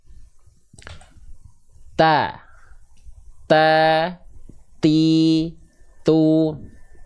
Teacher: ujung lidahnya melet ujung lidahnya keluar